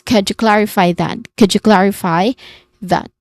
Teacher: And then followed that the last word it has a voice th sound followed by a short uh sound and then a letter t